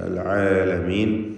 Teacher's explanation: അൽ ആലമീൻ നേരത്തെ സൂചിപ്പിച്ച പോലെ തൊണ്ടയുടെ മധ്യം ഐനിൻ്റെ മഖ്റജ് ശ്രദ്ധിക്കുക.